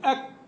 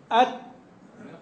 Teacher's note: يقال إن الكاف والتاء ينحصر بهم الصوت في البداية